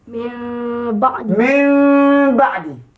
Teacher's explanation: yang terletak di atas Nun ya faedah dibaca hukum iqlab ertinya hendaklah ditukarkan bunyi huruf nun kepada bunyi huruf mim · Bacaannya mesti tukar nun jadi mim, kemudian ikhfa dan juga didengung.